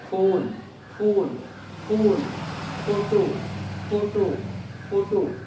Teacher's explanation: जब इस F को बोलते हैं, जिसका इंग्लिश होता है PH, तो हमारे दोनों लिप्स जो है वो एक दूसरे से टच करते हैं